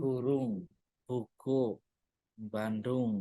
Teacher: untuk bunyi-bunyi bersuara beh, de, ge, beh, de, ge, itu mereka ada aspiratnya. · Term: beriti bersuara